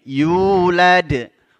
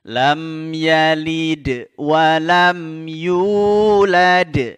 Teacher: Mad thobii yulad wau sukun sebelumnya berbaris damah